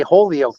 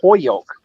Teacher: people from Holyoke don't say Holyoke; they say Hoyoke. So they almost take the L out.